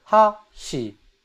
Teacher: They go from low to high. In standard dialect it's actually high to low.